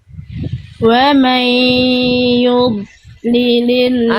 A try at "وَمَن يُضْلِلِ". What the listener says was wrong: Jangan putus. Udah bagus, udah ngalir itu Bunda. Tapi jangan ada stop dulu. Antara dengan li jangan ada jarak. Dia udah ngalir tadi Bunda, bagus. Tapi Bunda masih kasih jarak di antara dengan li. Perhatikan bunyi, saya coba bunyi detailnya, saya coba lambatkan ya. Wa may yudlilillahu fama lahu min had. Jadi may yudli jangan sampai ada jarak.